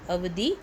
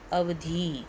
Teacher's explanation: पहले आपको जो अवधि है उसमें ध पे छोटी की मात्रा है तो उसको हम जल्दी से पढ़ेंगे, और अवधि में आपको बड़ी की मात्रा है तो उसके उच्चारण में हम थोड़ा समय लगाएंगे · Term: दीर्घ स्वर